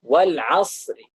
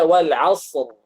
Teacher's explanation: Atau misalnya kita wakaf wal asri. Nah, kalau kita pakai raum itu tipiskan